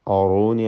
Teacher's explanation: അറൂനി ഇതിൽ റായിന് മാത്രം തഫ്ഖീം നൽകി തടിപ്പിക്കണം, മറ്റക്ഷരങ്ങൾക്ക് തഫ്ഖീം വരരുത്.